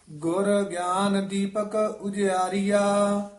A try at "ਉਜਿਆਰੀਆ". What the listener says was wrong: ਉਜਿਆਰੀਆ ਉਚਾਰਨ ਕਰਨਾ ਹੈ। ਉਜਿਆਰੀਆ ਨਹੀਂ ਕਹਿਣਾ ਬਿਹਾਰੀ ਲਾ ਕੇ।